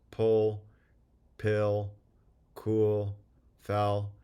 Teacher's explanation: you should be able to sense that the back of your tongue is Raising more than a word like Larry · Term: dark L